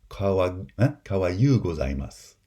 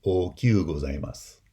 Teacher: It's an alternation, an allophonic change between the high front I and the glide, the palatal glide, y